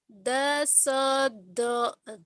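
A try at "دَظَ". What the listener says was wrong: Dasozo. Zo, bukan do. Do mah yang ini nih. Ini ZHO.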